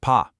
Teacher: the Mandarin P, on the other hand, is aspirated. It has a very distinct puff of air. You can actually feel it if you put your hand in front of your mouth.